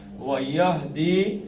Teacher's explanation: یح نہیں کرنا، یہدی سینے سے. و یہدی لبا کر دینا کیونکہ آگے حمزہ آ گیا